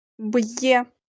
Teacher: перший звук твердий приголосний б буква є після апострофа позначає два звуки йе який приголосний й